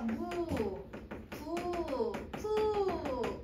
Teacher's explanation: 그냥 미음 비읍 피읍 쌍비읍이 왔는데 으가 왔잖아요 얘를 다 우로 발음하세요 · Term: 원순모음